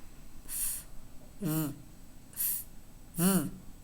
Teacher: The lower lip touches the upper teeth. · F is voiceless, v is voiced. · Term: labiodental sounds